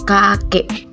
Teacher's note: Vokal E tengah bawah depan tak bundar pada kata kakek.